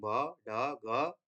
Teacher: The vocal folds are partially closed and vibrate. But air escapes through the small gap, and because, okay, with this state, murmur state or breathy voice sounds are produced, and we don't have this type of sound in English, but in Hindi or Nepali, we have this type of sound like bha, dha, ga.